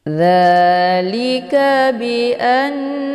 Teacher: Dzalika bi anna, ini dibaca panjang, ada harokat fathah berdiri tegak. Ini dinamakan dengan mad tabi'i muqaddar, dibaca panjang 2 harokat